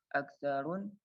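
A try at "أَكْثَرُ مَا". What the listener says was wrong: Iya, aksarun juga itu roknya harusnya bukan tanwin aktsaruma gitu. Itu banyak yang salah nih rokatnya. Ingat ya, yang ana koreksi tadi ahsanuhum so'imil qaimi, kemudian berikutnya aksaruma, kemudian di atas ada lagi litan sya'a alaiha wa ta'tadaha.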